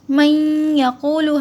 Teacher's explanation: ہلکی سی آواز یعنی ہلکا سا غنہ ہوتا ہے یہاں پر، اسے ادغام یا کہتے ہیں۔